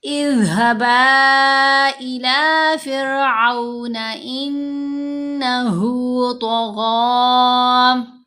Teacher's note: تو یہاں پر ہم نے طا اور غین کو موٹا پڑھا کیونکہ یہ دونوں حروف مستعلیہ میں سے ہیں۔ پھر غین کے اوپر کھڑا زبر ہے، کھڑا زبر کے اوپر جب وقف آتا ہے تو پھر ہم لاسٹ لیٹر کو ساکن نہیں کرتے بلکہ حرکت کے ساتھ ہی پڑھتے ہیں۔